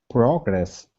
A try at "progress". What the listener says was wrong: Okay, your PR is good now. Let's work on the GR instead of gress. Progress. Focus on that R.